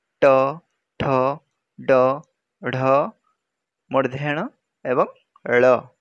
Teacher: मूर्धन्य ध्वनि उच्चारण समय रे जिह्वा शिखर अर्थात जिह्वार टीप मूर्धा सहित मिलित हुए।